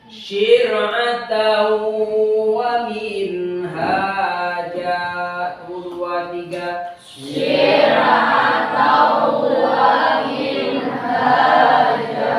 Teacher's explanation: Tannya dilebur ke huruf wawu, dimasukkan ke depan.